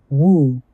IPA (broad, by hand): u